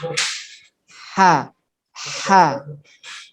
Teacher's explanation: harus ditekan ke tengah-tengah tenggorokan ah iya ubah hahihu bahanya perbedaannya hak itu pasti terdengar suara desis